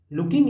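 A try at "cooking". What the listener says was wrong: या कुकिंग? कुकिंग। आपने पढ़ा था लुकिंग। देखिए होता है ना, देख कर भी नहीं देखेंगे हम, सी को हम ला पढ़ देंगे।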